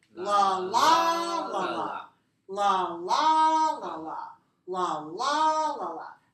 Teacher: If we say it this way, la, la, la, la, la, la, la, la, la, la, la, la, then this pattern is 4 syllables stressed on the second.